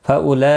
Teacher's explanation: یہاں پر مد متصل ہے 4 الف کے برابر کھینچ کر پڑھیں گے